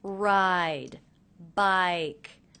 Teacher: Ride, bike. Those were the two longest words in that sentence fragment.